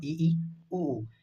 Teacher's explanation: संवृत स्वर जिसमें मुख लगभग बंद होता है। इसमें आएगा इ, ई, उ।